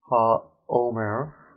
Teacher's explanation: Okay, and since we have a guttural letter here, we have a case of compensatory lengthening for the definite article. That's why it has a long vowel here.